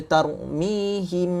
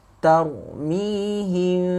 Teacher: Jadi dia tak jadilah ikhfa' tu kita nak sembunyikan mim mati tu. Sekarang kita kata cara nak baca ikhfa' syafawi ni, dia kena renggang sikit.